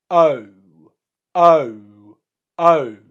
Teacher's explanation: you're starting in the schwa position which is a space for one and a half fingers in between the teeth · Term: diphthong